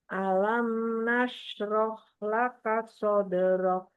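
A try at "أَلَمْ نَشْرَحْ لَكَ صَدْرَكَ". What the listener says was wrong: Iya, kafnya kasih hams. Laka sadrak.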